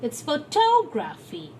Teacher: If we add the suffix graphy, the shift in the accent shifts from pho to to. It's photography.